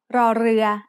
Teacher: an R sound with a trill